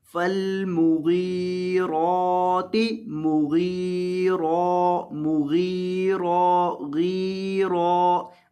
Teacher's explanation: فالمغیرات مغیرا، مغیرا، غیرا، غین اور را دونوں کو لمبا کر کے پڑھنا ہے، اور غین کو موٹا کرنا ہے اور را کو بھی آپ نے موٹا کر کے پڑھنا ہے